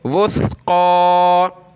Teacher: سا پہ زبان نکالی جاتی ہے تھوڑی سی